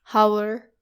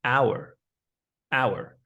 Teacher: The H should be silent and there's no O sound.